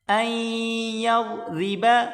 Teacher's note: ان اللہ لا یستحیی، ان اللہ لا یستحیی، یا کو سین کے ساتھ ملا کر پڑھیں گے، یس تاح زبر تح، لا یستحیی ان یضرب، این حمزہ کو یا کے ساتھ ملا کر پڑھیں گے، حمزہ یا زبر ای، یا ضاد زبر یض، این یضرب، را زیر ری، ضاد کو موٹا کریں گے، را کو باریک کر کے پڑھیں